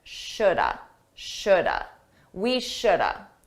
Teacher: Notice that L is silent.